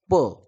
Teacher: फ प फ प फ प फ प फ प म्हणजे ओठांचा दोन्ही ओठांचा त्या ठिकाणी स्पर्श होतोय संगम होतोय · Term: औष्य